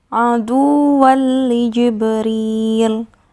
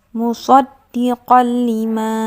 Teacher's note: Tanwin bertemu dengan huruf lam, idgham bila gunnah.